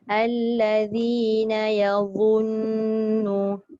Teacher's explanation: bila dia keluarkan hujung lidah, dia tidak mengeluarkan sofir ataupun desiran